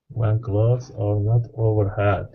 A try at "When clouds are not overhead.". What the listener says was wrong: Okay, now give me a good short E sound instead of had. It's head.